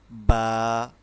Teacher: যখন আমরা বাটা উচ্চারণ করব দুইটি ঠোঁট একসাথেই মিলিয়ে পড়তে হবে।